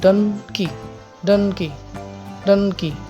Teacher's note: এই শব্দটাতে আমরা দেখব যে দুটো সিলেবেল আছে ডান এন্ড কি তাহলে এখানে আমাদের স্ট্রেসটা হচ্ছে ডান এর উপর ডান কি ডান কি ডান কি সো ডানের উপর স্ট্রেসটা আসছে এবং কিটা আনস্ট্রেস থেকে যাচ্ছে